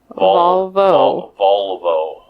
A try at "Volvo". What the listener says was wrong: Volvo. Not Valvo. Volvo. You're sounding an A.